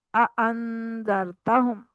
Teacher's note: हमजा को इंतहा हलक से ही अदा करना है · इसको अन नहीं करना, आइन से के वाले आइन वाले मखरज से अदा नहीं करना। हमजा को इंतहाई हलक से ही अदा करना है आपने।